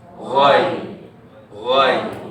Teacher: Gha tu tebal, tetapi dia akan bunyi lunak waktu kita sebut lin dekat sini.